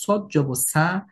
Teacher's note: আমি যদি বলি সদ জবর সা, তাহলে এই সদটা পরিবর্তিত হয়ে সিনের মতন হয়ে যাবে